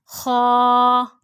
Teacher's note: हलक के ऊपर वाले हिस्से से। हलक के ऊपर वाले हिस्से से, खा।